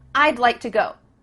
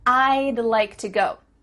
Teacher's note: we're cutting off all the sounds in the word would except for that final D